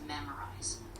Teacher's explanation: The stress is on the first syllable, so it's memorize. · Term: stress on the first syllable